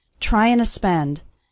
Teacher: the word to just becomes a little a sound at the end of trying